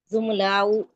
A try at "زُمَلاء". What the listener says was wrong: زملاء. دیکھیں حرکات جو ہے نا وہ صحیح پڑھا کریں. اگر آپ کہیں گے زملہ تو اس کا مطلب ہے آپ میم کو ساکن کر رہی ہیں.